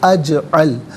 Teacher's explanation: جیم ساکن ہے لیکن حرف قلقلہ ہے تو آواز لوٹتی بھی محسوس ہونی چاہیے